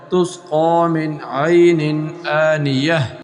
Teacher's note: نون ساکن کے بعد عین حرف حلقی میں سے آ گیا، یہاں بھی غنہ نہیں ہوگا، من نہیں پڑھیں گے۔